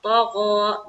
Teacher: دیکھیے یہاں پر دونوں جو حرف ہے، طا بھی موٹے حروف میں سے ہے اور غین بھی موٹے حروف میں سے ہے. غین اور طا تو دونوں کو منہ بھر کر نکالنا ہے